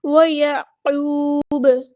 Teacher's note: عین کو وسطی حلق یعنی مڈل تھروٹ سے ادا کریں گے ، قاف ہمارا ہیوی لیٹر ہے پورا ادا کریں گے، واو